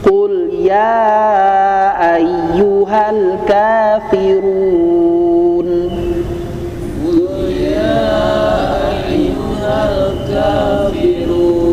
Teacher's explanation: Qul ya ini saya ambil 4 harokat ya, 4 harokat ya.